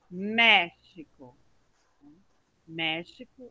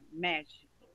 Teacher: a sílaba tônica está no me